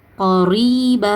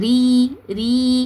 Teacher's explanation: தொண்டையில இருந்து கொண்டு வராதீங்க. ரா வந்து ராக்கு கீழ ஜேர் இருக்கு கஸ்ரா இருக்குது. இத உச்சரிக்கும் போது மெல்லினமா உச்சரிக்கணும். கரிப இந்த மாதிரி ஹெவியா ஓதக்கூடாது.